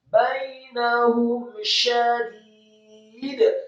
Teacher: Mim mati ketemu huruf sya. Hukum bacaannya adalah idhar syafawi. Dibaca jelas, tidak boleh digunnahkan.